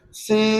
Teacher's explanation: Dia kena masukkan nun dalam mim tu yang kena rapat bibir tu. Tak boleh lagi sebut sin, buka mulut tak boleh lagi. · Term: Idgham ma'al gunnah